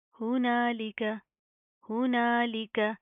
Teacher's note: لام زیر لی ہوتا ہے, اس کو آپ نے لے نہیں کرنا